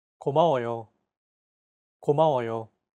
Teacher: Each syllable is pronounced for an equal amount of time. 고마워요. Since Korean is a syllable-timed language, there is no word stress.